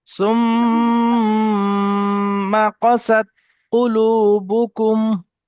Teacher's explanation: যখনই আপনি গুন্না করছেন, গুন্না করার পর যেমন ধরুন এখানে তাসদিদ আছে, তো এখানে মিমের উপর তাসদিদ আছে, গুন্না হচ্ছে সুম্মা।